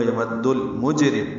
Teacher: جیم ساکن پہ قلقلہ ہے